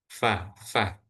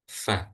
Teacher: Bibir bawah menempel pada dua gigi seri bagian atas tempat keluarnya huruf fa